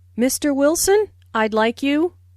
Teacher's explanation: Notice the rising intonation on Mr. Wilson, which is used to address someone. Listen for the D in I'd like.